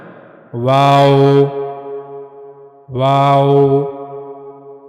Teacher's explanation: दोनों होठों को आपने एक साथ मिलाना नहीं है। वाओ वाओ दोनों होठों को गोल किया जाएगा। लेकिन उनको मिलाया नहीं जाएगा एक दूसरे के साथ बल्कि दरमियान में कुछ फासला होगा दोनों होठों के दरमियान